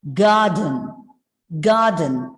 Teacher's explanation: the r is silent because it comes just before a consonant sound